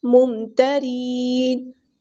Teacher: رو ہمارا باریک light letter ہے، نون کو ہم ساکن کر دیں گے وقف کرتے ہوئے